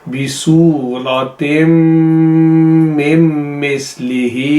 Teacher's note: फिर है मिम मिस्लिही बिसूरतिम मिम मिस्लिही, यहाँ इसको प्रोलॉन्ग करना है। मिम इसलिए है कि मिन जो लिखा गया है यहाँ पर उसमें नून ख़त्म हो जाती है